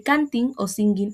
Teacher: sonaría como ng al final de canting o singing en inglés. Es decir, es una consonante velar nasal.